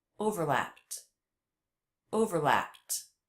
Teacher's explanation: Notice the ED ending here is pronounced as a T, an unvoiced sound. That's because the sound before, P, was also unvoiced.